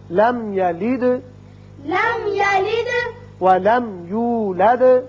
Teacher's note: یہاں میم ساکن ہے، اظہار شفوی ہوگا. دال ساکن ہے، صفت قلقلہ